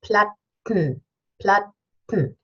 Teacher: we have T-E-N, and we swallow the vowel, and we have nasal release · So we stop the airflow, and then we push the air out through the nose for the nasal.